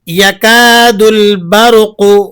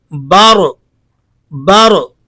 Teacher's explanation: تجوید کا قاعدہ یہ ہے کہ جب رائے ساکنہ سے پہلے زبر ہو تو اس کو پر یعنی موٹا پڑھا جاتا ہے، اس لیے آپ نے یہاں را کو موٹا کر کے پڑھنا ہے، بارو بارو۔